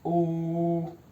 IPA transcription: u: